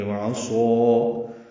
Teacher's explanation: عین وسط حلق سے ادا کریں گے